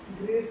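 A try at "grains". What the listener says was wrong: ग्रेस नहीं है, ग्रेन है, ग्रेन। देखिए यहाँ पे नौ का उच्चारण हो रहा है ना, तो हम लोग क्या बोलेंगे, ग्रेन्स, अनाज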